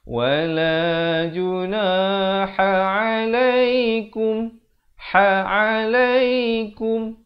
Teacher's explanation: Izhar syafawi, sempurnakan saja bunyi mim mati